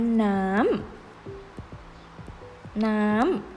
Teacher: รูปเป็นรูปโทแต่เสียงเป็นเสียงตรี